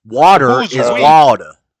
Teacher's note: we don't do hard R's in the South